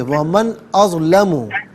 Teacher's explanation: ومن میں نون پر غنہ نہیں کریں گے، دوسرا اظلمہ نہیں ہے، اظلمو ہے، ومن اظلمو۔